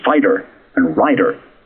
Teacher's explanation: Americans roll the T in fighter and rider.